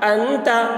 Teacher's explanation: نون ساکن کے بعد حروف اخفاء میں سے تا آ رہا ہے، اس لیے نون کی آواز کو ناک میں چھپا کر پڑھیں گے، اس کو اخفاء کہتے ہیں۔